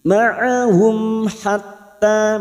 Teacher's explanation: Taq'udu, taq'udu ma'ahum, ududu duma bertemu sukun 2 harakat, ma'ahum mim sukun bertemu ha idhar safawi, mim sukun dibaca jelas tanpa mendengung